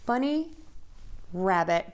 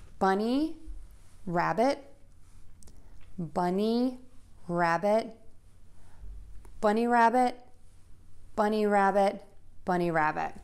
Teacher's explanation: this word bunny is going to be louder, longer, and higher in pitch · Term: compound noun